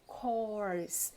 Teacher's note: a pronúncia de course, ela é com O, bem aberto.